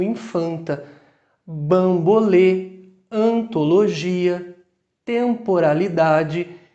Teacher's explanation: o m e o n contribuíram para indicar que a vogal pronunciada é nasal e não oral